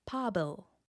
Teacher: The i that was added makes the final sound slender, with a lighter and brighter /lj/.